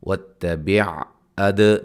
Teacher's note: دال پہ قلقلہ، با مد اصلی اور را کو موٹا ادا کریں گے